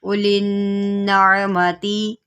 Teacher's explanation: اب یہاں پر نون مشدد ہے، اس میں غنہ کریں اور عین کو عین کے مخرج سے نکالیں۔